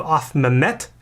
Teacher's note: the primary stress falls on the verbal root